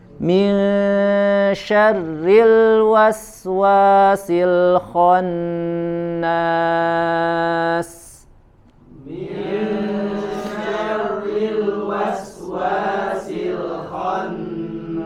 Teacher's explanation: ada huruf ro ya, tasydid, dan dia berharokat kasroh, maka dibaca tipis